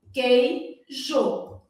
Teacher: na palavra queijo o u não é pronunciado